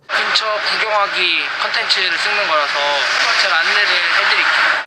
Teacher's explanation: you can hear a lot more air in his voice than in the other members. So he has this kind of like an airy voice, an airy pronunciation.